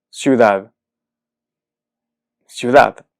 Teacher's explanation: pensemos en ejemplos ciudad ciudad esta palabra termina en web y su sílaba tónica es la última es decir es aguda · Y su sílaba tónica es la última, es decir, es aguda. Por lo tanto, cumple con la naturaleza, cumple con lo que uno esperaría del castellano en una palabra que termina en consonante diferente de N o S, es decir, que sea aguda.